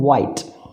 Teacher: The active articulator is brought near the passive articulator in such a way that there is a wide gap between them. The air from the lungs escapes through the wide gap freely without any friction. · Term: semi-vowels